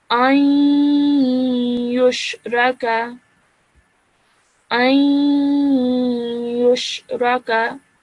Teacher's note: So when you say it, to make this noon sakin sound, it's just a slight 2-second nasal sound that you produced before you actually join the alif to the ya.